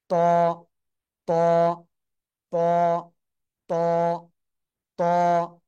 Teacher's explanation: জিহ্বার আগা উপরের দুই দাঁতের গোড়ায় লাগিয়ে একটু মোটা আওয়াজে উচ্চারণ করতে হবে।